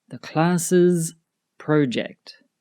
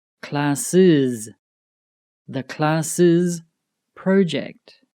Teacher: This extra syllable is added to singular nouns ending in S when we have added the apostrophe S.